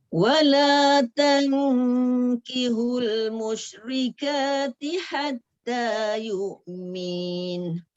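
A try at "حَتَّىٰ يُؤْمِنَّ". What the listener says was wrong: Tu tak panjang.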